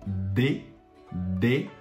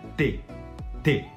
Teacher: A diferença é que D a gente vibra, T a gente não vibra e exatamente o mesmo movimento.